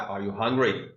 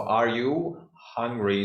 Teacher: in the u.s you know that your intonation will go high